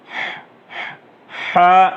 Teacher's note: ہا درمیان حلق سے اچھی طرح سے نکال کے پڑھیں گے